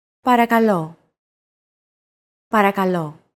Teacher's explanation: make sure to stress that final syllable with the accent mark.